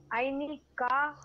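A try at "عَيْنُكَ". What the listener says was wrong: Use dhamma before ka.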